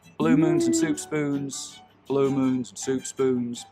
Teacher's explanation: When I cross the Mississippi, I don't have very fronted goose vowels anymore, but by the time I'm in Texas, blue moons and soup spoons, it's not coming forward hardly at all now.